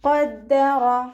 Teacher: ഖാഫ് ഇസ്തിഅലാൻ്റെ letter ആയതുകൊണ്ട് തഫ്ഹീം ചെയ്തിട്ട് ഉച്ചരിക്കുക